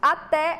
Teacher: a sílaba tônica é a última Então ela é oxítona